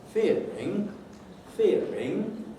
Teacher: So the nuclear syllable itself will be falling, and the 1 syllable of tail, that must do the rising. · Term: fall-rise